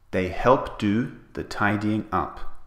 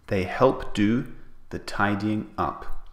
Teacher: So we omit the T sound at the end of helped.